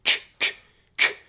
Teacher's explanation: So K is basically the unvoiced version of G. So if you say K, you can feel that nothing is vibrating.